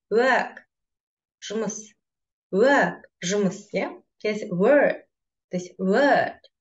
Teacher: W-дан кейін дауыссыз дыбыс келетін болса, онда ә болып оқылады екен. Ұзақ, қысқа емес, ұзақ.